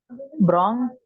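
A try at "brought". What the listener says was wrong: Yes, good.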